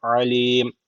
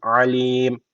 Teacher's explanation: Bu ayınlar boğazdan olması gerekiyor. Alim. Burada en sonunda meddi ağrı tecviti var.